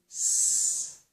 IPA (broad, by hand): s